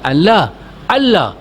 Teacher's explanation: Hilangkan nun dalam sebutan lam. Masuk secara sepenuhnya. Asyhadu Allah diidghamkan tanpa dengung.